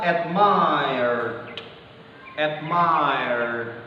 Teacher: Salah satunya kalau dalam American pronunciation jelas R itu disebut dan dia masuk dalam anggota voice consonant.